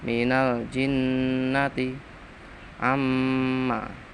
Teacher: Sebab nun lan mim ditasdidi. Nun tasdid, mim tasdid dibaca ghunah